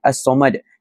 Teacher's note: Alif lam syamsiah ni adalah alif lam yang apabila kita baca kita tak dengar huruf lam itu. So apabila kita baca daripada sepatutnya as-samad dia akan jadi as-samad, tiada huruf lam yang dapat didengari.